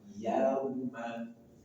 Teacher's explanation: Maka bacaan li, bacaan lembut, mengalir tanpa ada penekanan. Yauma. Jangan dibaca yauma.